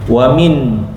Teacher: nun mati bertemu dengan Hamzah. Jelas ya. A izhar halqi. Ya. Jelas.